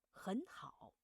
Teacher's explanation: when both characters in a word are the third tone, both are third tone, the first word only read the second half.